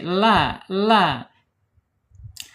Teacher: makhrajnya lam ini ada di ujung tepi lidahnya menyentuh langit-langit ya. Kemudian sejajarkan dengan gigi seri la. Kemudian secara sifatnya tawasud ya, antara asyida tertahannya suara dan arkhah mengalirnya suara bainiyah.